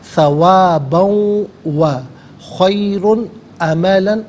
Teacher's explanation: ثواباً میں با پر دو زبر کی تنوین، اسے واو کے ساتھ ملا کر واو کی آواز کو ادا کیا جائے گا۔ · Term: یرملون کا قاعدہ